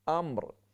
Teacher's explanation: بہت سے پڑھنے والے پڑھ لیتے ہیں امر، امر یہ بھی غلط ہے، امر میم ساکن، اس کے بعد وقف کی وجہ سے را ساکن، دونوں کو ساکن رکھ کے وقف کرنا ہے